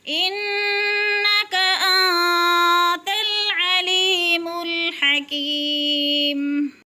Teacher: یا مدہ کو 3 حرکات کے برابر کھینچ کر پڑھتے ہیں